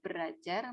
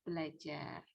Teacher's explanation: terjadi perubahan bunyi yang ber itu berubah menjadi fonem l, ya. Jadi misalnya berajar itu nanti dibacanya bukan ber plus ajar, ya, itu bukan berajar melainkan belajar.